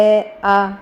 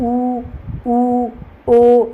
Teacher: आ के बोलने में हमारा मुंह पूरा गोल नहीं बनता है जबक उ ऊ ओ इसमें आप बोल के देखेंगे तो पूरा मुंह हमारा गोल बनता है